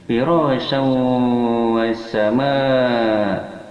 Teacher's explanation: Cara membacanya memasukkan tanwin kepada waw disertai gunnah, yaitu dengungan 2 harakat pada hidung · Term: idgham ma'al gunnah